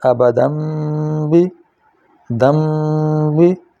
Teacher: تنوین کے بعد اگر با آ جائے تو تنوین کے نون کی آواز میم میں بدل جائے گی